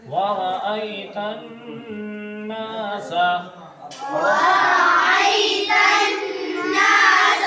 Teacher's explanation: نون پہ تشدید ہے تو اس کو کیا کریں گے؟ غننے کے ساتھ پڑھیں گے